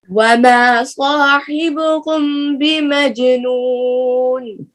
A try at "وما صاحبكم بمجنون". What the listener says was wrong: کم میں اخفا کریں پھر پڑھیے وما صاحبکم